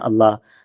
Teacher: تو اللہ میں لام موٹا ہوتا ہے